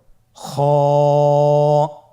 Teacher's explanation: খ হরফটির মাখরাজ হলো কন্ঠনালীর শেষ ভাগ হতে উচ্চারণ করতে হয়। কন্ঠনালীর শেষ ভাগ।